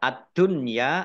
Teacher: alif lam syamsiyah karena tidak dibaca langsung masuk ke huruf berikutnya yaitu Dal